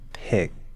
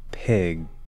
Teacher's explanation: the stopped k sound and the stopped G sound